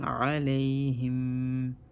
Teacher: Mim sukun, we hold it for 1 second.